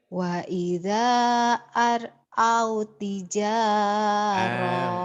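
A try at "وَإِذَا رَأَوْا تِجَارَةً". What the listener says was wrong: Tapi ini kan ini nggak ada barisnya. Ini patah punyanya ro. Wa idza ini matobi'i ke sini. Bukan aro ya, wa idza adanya panjang. Ro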